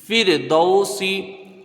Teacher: فا رازر فر، دال واجب دو، سنج سی، فر دو سی، فا کو را سے ملا کے پڑھیں گے، را ساکن سے پہلے زیر اصلی ہے، را باریک ہوگی · یہاں پر واولین ہے، اس کو تھوڑا سا کھینچ کے پڑھیں گے لیکن حروف مدہ سے کم ، سین کے نیچے زیر ہے، اس کو جلدی پڑھا جائے